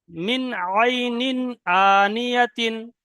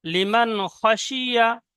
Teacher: কোনো গুন্না হবে না, বিনা গুন্নায় জাহির করে তাড়াতাড়ি পড়তে হবে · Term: ইজহার